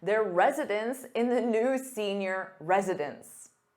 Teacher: But when you have an S on that noun, meaning more than one, it sounds exactly the same as residence, which is a place where someone lives. So the pronunciation is virtually identical when resident is in the plural form and it sounds like residence.